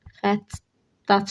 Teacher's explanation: Bu sözdə də vurğu sona düşür.